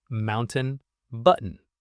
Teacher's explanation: Swallow the T when it's before an N.